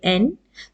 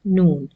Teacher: the sound of the noon it comes with the help of your tongue the tip of the tongue when it touches at the back of the gums of the upper and scissors the back gums of the upper